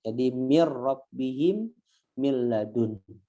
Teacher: cara membacanya ini dileburkan aja dengan tanpa dengung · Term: idgham bilagunnah